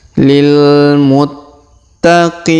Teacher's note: Perhatikan huruf ta berharokat tasdid, maka kita tahan dan kita tekan.